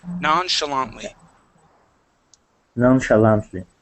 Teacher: This CH is going to sound like an SH.